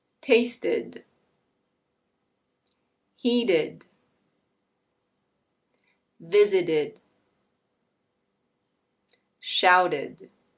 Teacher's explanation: In American English, if you add an -ed to a word that ends in /t/, that /t/ becomes a flap T, which is a /d/ sound.